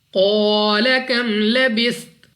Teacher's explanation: क़ाफ मुस्तालिया में से है, मोटा पढ़ना है। उसके साथ अलिफ मद्दा 2 सेकंड तक लंबा भी करना है और यहाँ पर वक्फ में ता को साकिन कर देना है।